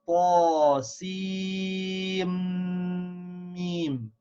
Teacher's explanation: So we say Sim, Mim. We don't pronounce the noon sound at the end of the letter Sin. So we say Ta, Sim, Mim. · the noon sound becomes silent and the Mim gets a shad.